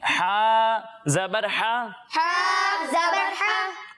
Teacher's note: ہا کی ادائیگی بھی حلق کے نچلے حصے سے ہوگی